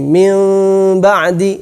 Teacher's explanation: 2 bibir ini tidak ditempelkan secara sempurna, bukan mim ba'di, akan tetapi agak ada renggangan sedikit. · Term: ikhfa